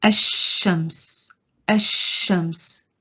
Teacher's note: the lam here is not sounded. So it's a silent lam.